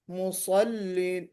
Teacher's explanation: صاد میں استعلا، اطباق اور صفیر ساری چیزیں ہیں